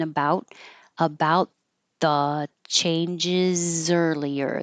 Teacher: you won't hear the T